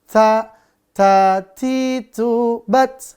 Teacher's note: Untuk ta, itu dia udara berhembus dan tipis.